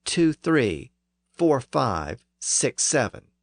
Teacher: In fact, if we look at the preceding and following numbers, we see that 2 and 3 begin with similar sounds, T and TH, and 6 and 7 both begin with the S sound. So if we give the word for 4 an F sound, we get a nice little rhythm.